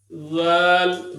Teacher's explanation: زال میں بھی زبان باہر آئے گی اور دانت اوپر نہیں لگیں گے۔ زال را زا، اس میں سیٹی ہوگی تھوڑی سی، زا سین شین، شین پورے منہ میں پھیل جائے گا۔